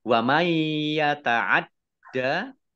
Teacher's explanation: nun sukun bertemu dengan huruf ya bacaan idgham bi gunnah masuk dengan mendengung yaitu mendengung ya ditandai yaknya ada tasdidnya.